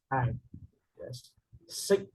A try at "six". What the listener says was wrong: not sick. When you say sick, it means you're not feeling well. That's sick, right? This one, ending sound, six. Six.